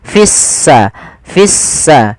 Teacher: lamnya dianggap tidak ada sehingga langsung diidgamkan ke huruf sin sehingga sin-nya berharakat tasdid. Seakan-akan s-nya dua. · Kita namakan di sini, kami lupa nulis, alif lam syamsiyah, yaitu alif lam yang kita tulis tapi tidak kita baca, sehingga di sini lamnya ditandai dengan warna abu-abu. Artinya lamnya dianggap tidak ada, sehingga langsung diidghamkan ke huruf sin, sehingga sinnya berharokat tasdid, seakan-akan s-nya dua.